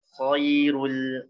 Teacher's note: Jangan lupa setelah dhammah ro-nya tebal, lamnya tipis.